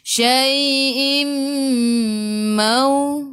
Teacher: Tanwin tak sama, tengok selepasnya ada mim, di atasnya ada sabdu. Idgham ma'al gunnah, masuk bersama dengung.